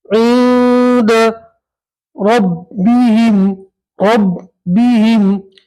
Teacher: یہاں نون ساکن کو ناک میں چھپا کر پڑھیں گے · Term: نون ساکن کا اخفا